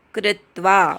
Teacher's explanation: कृत्वा मधल्या क्रूवर आघात